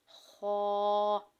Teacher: خا کو ہم موٹا کر کے پڑھتے ہیں، یہ موٹے حروف میں شامل ہے